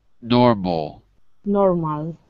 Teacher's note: I can hear you're saying normal with your tongue too far back in your mouth. In English, move it forward so it's touching here.